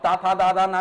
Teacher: ना का उच्चारण करोगे तो जीभ आपकी कहां से टकराती है जीभ आपकी टकराती है दांतों से तो दंत उच्चारण होगा